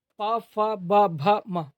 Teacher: उच्चारण में दोनों होंठ स्पर्श करते हैं उन्हें ओष्ठ वर्ण कहते हैं।